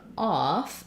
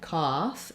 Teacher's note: this is the ah vowel so it's a rounded vowel it's different than the o the ah is a little more open